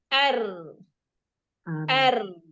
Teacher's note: Kenapa karena tadi ada udara yang keluar dari cilah sempit tadi maka ujung lidahnya cenderung bergetar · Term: takrir